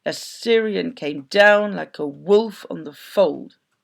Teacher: we call this an anapestic rhythm it's got three syllables in it unlike the iambic which has two